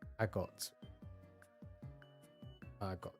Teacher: Emphasis on the second syllable. That makes sense.